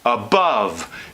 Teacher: it's commonly transcribed as above, so that it's a schwa for the first syllable and the turned V for the second syllable. But the reality is, most Americans take this turned V and do it closer to the schwa.